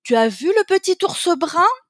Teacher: intonation montante très exagérée